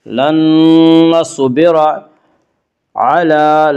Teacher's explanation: لام کے اوپر کھڑا زبر ہے، کھڑا زبر کو ایک الف کے برابر کھینچ کر پڑھیں گے